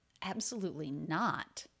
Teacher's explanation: he does do a very light release of a true T here at the end.